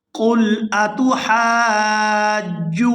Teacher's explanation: یہاں ہا کو الف مدہ کی وجہ سے کھینچ کر ادا کریں گے اور ہا کو کھینچتے ہوئے جیم مشدد کے ساتھ ملائیں گے